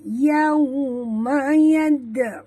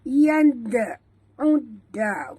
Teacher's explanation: dal mati di tengah kalimah, lantunkan dia qalqalah surah.